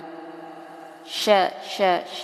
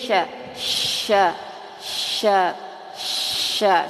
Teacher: di sebentar sya sya sya ini nih Keluarnya dari tengah-tengah lidah Sya tengah-tengah lidah dan menempel ke langit-langit atas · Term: huruf Shin